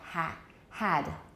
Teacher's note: head in american but in british it's lower